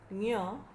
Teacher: ञ, त्याचं उच्चारण स्थान आहे पुढची टाळू, ज्याला अग्र टाळू म्हणतात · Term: अनुनासिक व्यंजनं